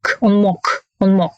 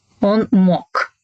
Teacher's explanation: We write G, but pronounce K, он мог, because it's the end of the word, so it's a weak position. So G, voiced consonant becomes voiceless.